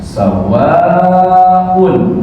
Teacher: panjang tetapi dibaca panjangnya boleh pendek ataupun boleh panjang kalau ini mad wajib muttasil artinya dibaca panjangnya tidak boleh kurang